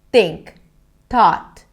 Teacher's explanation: Because I blocked the air, it actually sounded more like a T sound than a TH.